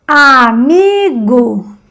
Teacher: En la A más débil, mi más fuerte, gu más débil. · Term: vocales tónicas